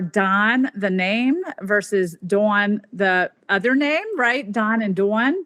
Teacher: the cot and quat vowels. But over time, especially in the West, they have merged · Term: low back vowels